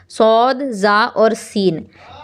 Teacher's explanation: जुबान की नोक और दोनों दांतों के अंदरूनी किनारे से अदा होते हैं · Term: रूफे सफीर